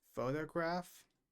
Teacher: the stress is in the beginning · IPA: /ˈfəʊtəɡrɑːf/